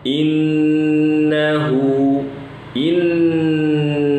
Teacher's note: nun bertasydid, ditahan, dipanjangkan gunnahnya 2 harokat